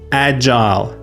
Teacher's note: Long I sound like the I in while or mile. Stressed on the first syllable. agile, not agil or agil.